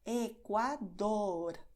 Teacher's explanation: en Ecuador tienes primero la D con bastante contacto y luego la R, que es lo mismo pero solo un toquecito rápido.